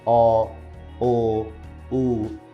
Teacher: একটু খেয়াল করে দেখো, যখন আমরা অ উচ্চারণ করছি, অ উচ্চারণ করতে কিন্তু আমাদের ঠোঁটটা গোল হয়ে যাচ্ছে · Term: গোলাকৃত